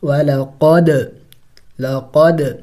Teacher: دال حروف قلقلہ میں سے ہے، ساکن ہے تو قلقلہ کریں گے یعنی ہلا کے پڑھیں گے